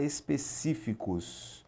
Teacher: E já em específicos, vamos separar aqui, ó, de trás para frente, específicos, você vai contar específicos. Sílaba tônica aqui é a antepenúltima, também uma proparoxítona.